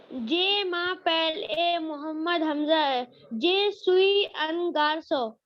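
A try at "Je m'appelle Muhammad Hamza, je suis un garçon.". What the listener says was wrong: बेटा it's not J. J तो है ही नहीं. French में you will learn whole French, entire French, and you will not find this pronunciation of J. J, D, T exist ही नहीं करते French में.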